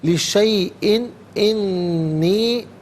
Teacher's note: لِشَيْءٍ میں حمزہ کے نیچے دو زیر کی تنوین ہے، اس کے بعد حرف علقی حمزہ آ رہا ہے، تو یہاں تنوین میں اخفا نہیں ہوگا بلکہ یہاں پر اظہار کیا جائے گا، اخفا یا غنہ نہیں کیا جائے گا